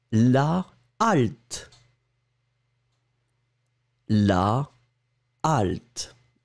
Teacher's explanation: puisque c'est un h aspiré vous allez garder votre article intacte